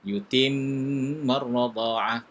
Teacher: nun syiddah kena baca dengan dengung